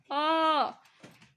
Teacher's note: अ का उच्चारण करके देखिए कि जीभ के बीच का हिस्सा थोड़ा सा ऊपर उठता है और वहीं पे जोर पड़ता है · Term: मध्य या केंद्रीय स्वर